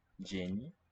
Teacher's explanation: DZI, E, and then palatal N